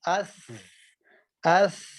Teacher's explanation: سا کو پڑھ کے دیکھیں تو جو ہے نا آپ کی آواز جاری رہے گی